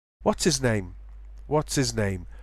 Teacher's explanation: even RP speakers drop their H's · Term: H dropping